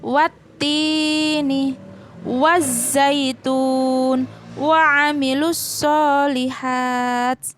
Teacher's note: dibaca melebur yakni meleburkan huruf alif ke dalam huruf Syamsiah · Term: alif lam syamsiah